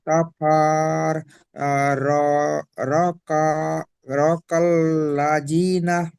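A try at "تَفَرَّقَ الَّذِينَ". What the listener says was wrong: হুম তাফাররাকাল্লাযীনা, এই কফের জবরটা লামের সঙ্গে যুক্ত হবে।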